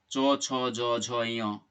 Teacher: তালু কোনটা মুখ গবরের ওপরের দিকটা এবং ওপরের দিকের সামনের অংশটি তালুতে শ্বাসবায়ু গিয়ে বাধা পেয়ে এই বর্ণগুলি উচ্চারণ করতে সাহায্য করছে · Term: তালব্য